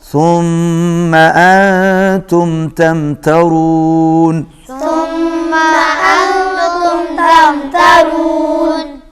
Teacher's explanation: میم پر تشدید ہے، غنہ ہوگا